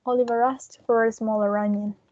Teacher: we have three linking rs here